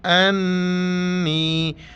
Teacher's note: یہاں پہ ہمیں ناک میں آواز چھپانی، گنگنانی جیسی آواز ناک میں پیدا کرنی ہے، اسے غنہ کہتے ہیں۔ امزا نون زبر ان، نون یا زیر نی، انی۔